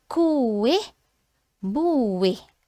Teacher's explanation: Kita akan jumpa dua vokal ni duduk dalam satu perkataan. Okey dan kita terpisah sebutan bunyi dia. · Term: vokal berganding